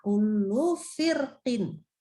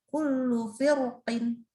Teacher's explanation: Jadi firqin itu boleh baca tipis, boleh baca tebal.